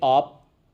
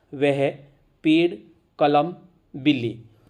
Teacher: कहीं नाक का यूज़ नहीं हुआ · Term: निर्नुनासिक